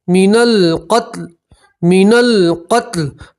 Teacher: लाम के ऊपर वफ़ करेंगे तो ज़ेर की जगह जज़म पढ़ेंगे